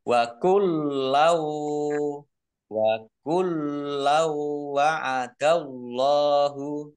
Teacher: Wa kullau wa'adallahu, lamnya dibaca double, ada tasdidnya. Fathah tanwin bertemu dengan huruf wawu, bacaan idgham bi gunnah, masuk dengan mendengung. Maksudnya masuk di sini fathah tanwinnya ini tidak dibaca, langsung masuk ke huruf wawu.